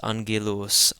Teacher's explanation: the first gamma in this word being pronounced as an N, followed by a second gamma pronounced as a hard G. So this is angelos.